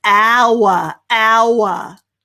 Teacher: we don't pronounce the h at all there do we it's just hour